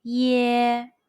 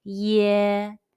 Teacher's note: In this lesson, we will talk about the final When the final sound is following letter Y, the initial E sound, the pronunciation is like the ye in the English word yes, but it's prolonged